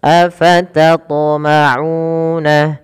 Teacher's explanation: Pada lafal u kita panjangkan dua harakat karena ia mad tabi'i, adanya dhammah bertemu dengan huruf waw.